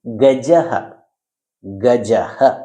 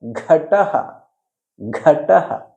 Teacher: ಗ ಇತಿ ಅಲ್ಪಪ್ರಾಣಾಕ್ಷರಂ ಘ ಇತಿ ಮಹಾಪ್ರಾಣಾಕ್ಷರಂ